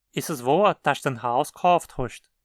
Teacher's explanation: Aqui a redução de “du” para “de” acaba fazendo com que o artigo indefinido “en”, que já é bem reduzido também, se conecte